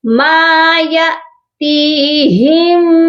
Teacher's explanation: یہاں پر یا کے ساتھ الف نہیں ہے، حمزہ ہے، کیونکہ یہ خالی نہیں ہے، الف ہمیشہ خالی ہوتا ہے، تو یہاں پر ہم اس کو جھٹکا دے کر پڑھیں گے کیونکہ حمزہ ساکن ہے